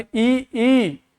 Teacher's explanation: तो अग्र स्वर इ ई और ए आई आपकी जीभ आगे ही है।